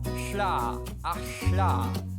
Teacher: the voiceless lateral fricatives found in Icelandic, Welsh and Navajo